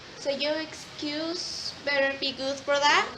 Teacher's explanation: Irish accent tends to erase the R at the end of the words